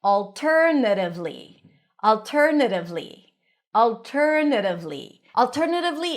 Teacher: Primary stress is on tur